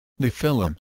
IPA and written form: ˈnɛfɨˌlɪm (Nephilim)